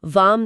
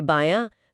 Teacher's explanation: होठों को गोल करके व बोलने से कहीं ज्यादा आसान है दोनों होठों को मिलाकर ब बोल देना